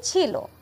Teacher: আ একটা স্বরধ্বনি আমরা সকলেই জানি সে কিন্তু লোপ পেয়েছে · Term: আদি স্বরলোপ